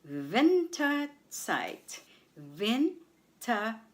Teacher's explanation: The stress is on vin on the first syllable